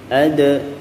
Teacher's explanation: Huruf dalnya ini adalah huruf qalqalah sugro karena dia di tengah kalimat, ya. Adra baru lepas, ya.